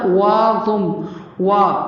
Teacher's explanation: وا کی آواز پر ہوگی، میم مشدد ہے، غنہ کرنا ہے. میم کے ساتھ نون کو ملاتے ہوئے غنہ کریں گے.